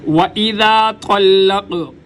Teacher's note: قاف پہ قلقلہ ہوگا یعنی آواز کو اچھالا جائے گا. جیسے کسی گیند وغیرہ کو دیوار پر ماریں تو گیند اچھلتی ہے، ایسی آواز کو اچھالا جائے گا.